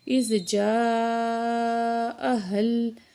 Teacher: مد ہے، اس کو 4 سیکنڈ ہم کھینچ کے پڑھیں گے